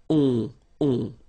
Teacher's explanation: you don't pronounce the final s, you get the on sound. Okay? Nasal in your nose, on. Alright?